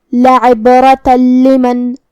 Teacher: لام حروف الادغام بغیر غنہ میں سے ہے اور ادغام کا معنی ہے حرف کو حرف میں داخل کرنا، تو ہم یہ تنوین کو لام میں ملا کے بغیر غنہ سے لیکن تشدید کے ساتھ ہی حکم کو ادا کریں گے